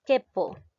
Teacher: En este caso no se está llegando a pronunciar la vocal U, por lo tanto no hay continuidad de vocales, no hay dos vocales continuas.